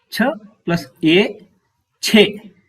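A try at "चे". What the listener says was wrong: Excellent. Thank you very much.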